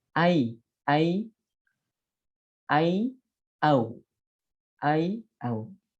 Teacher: Jadi bukan ke e dan bukan ke o. Jadi dibacanya ai bukan ae. Atau au bukan ao.